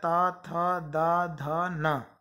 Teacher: ता, था, दा, धा, ना, ये जो वर्ण है वो दंत, इनका उच्चारण स्थान दांत है, दंत है, तो ये कहलाएंगे दंत वर्ण। इनको बोलते समय हमारी जीभ दांत को टच करती है।